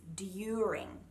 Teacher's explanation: Now, I've labelled it Chewy because the nice clean sound of the D becomes more of a J sound. So it's kind of like you're chewing on something. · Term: Chewy D